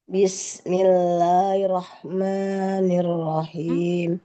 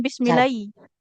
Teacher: jadi rnya ditekan bertasydid